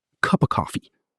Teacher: The consonant sounds link right into the preposition like puzzle pieces.